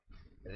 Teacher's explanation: ऋ का उच्चारण स्थान मूर्धा है।